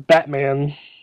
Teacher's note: there's no in between bat and man it's just bat man um it also makes T sounds like a D sound so